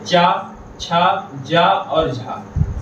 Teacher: स्पर्श संघर्षी वर्ण है। मतलब कि हमें उच्चारण करने पर जो हमारी जीवा है वह हमारे तालु से लगे, तो उन्हें हम कहते हैं स्पर्श संघर्षी वर्ण।